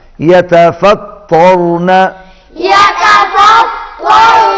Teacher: تا باریک اور تو موٹا